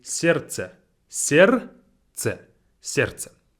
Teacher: letter D is silent. As you can read on the screen, it has a D in it. But it's just simply сердце.